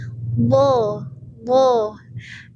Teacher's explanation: Bo itu pinggir lidah menyentuh gigi geraham atas. Jadi boleh satu sisi lidah, boleh dua-duanya. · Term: huruf bo